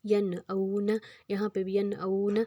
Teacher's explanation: نون پہ جازم آ گیا، اس کو بھی ہم ناک میں نہیں ادا کریں گے۔